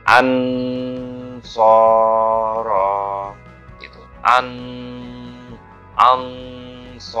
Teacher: shad itu kan dari ujung lidah ya, di balik gigi depan ya, gigi yang paling depan di baliknya itu, di ujungnya itu ujung lidah mengucapkan shadnya dari situ.